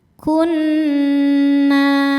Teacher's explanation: Kunna na mad thobbi'i zahiri sebab ada alif didahului harakat fathah. Cara bacanya panjang dua harakat.